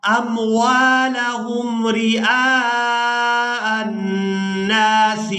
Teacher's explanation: اس حمزہ کو ہم نے نون مشدد کے ساتھ ملانا ہے اور نون پر غنہ کے ساتھ ادائیگی کرنی ہے